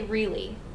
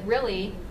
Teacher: I say really so I would use the lowercase i but if you say it the way you said it really it would be the uppercase I